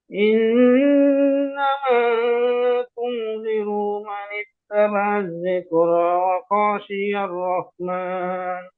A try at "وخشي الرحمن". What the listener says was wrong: ওই ওয়াখামাদ নেই, ওয়াখাশিয়ার, ওয়াখাশিয়ার